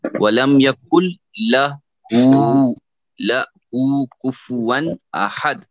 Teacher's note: نون نہیں پڑھا جائے گا یہاں پہ، یہاں سے سیدھے لام پڑھا جائے گا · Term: ادغام لام